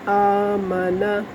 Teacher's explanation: یہ نون زبر نا حرکات میں سے، اور حرکات کو کھینچ کر بالکل بھی نہیں پڑھنا